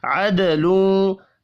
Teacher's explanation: دال ساکن پر قلقلہ کریں گے، لوں غنہ ہوگا۔